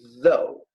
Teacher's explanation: como a língua entre os dentes havendo vibration, que nós não temos na língua portuguesa, tá? Esse som.